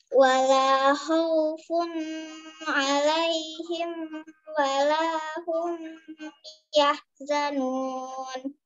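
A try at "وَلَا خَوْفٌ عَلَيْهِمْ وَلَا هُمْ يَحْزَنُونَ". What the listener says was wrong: Nah, mim sukunnya juga enggak dibaca dengung juga, Kak. Mim sukun bertemu mim sama mim sukun bertemu ba yang dengung. Kalau mim sukun bertemu wawu, mim sukun bertemu ya tidak dengung ya, dia.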